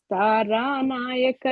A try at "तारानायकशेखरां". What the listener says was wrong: It's not Stara, ma Taranayaka only. It's Tara Nayak.